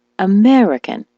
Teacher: the word American, as you know, is stressed on the me